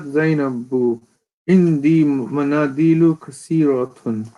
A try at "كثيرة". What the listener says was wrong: Avoid saying kasiratun. It's tha. Kathiratun.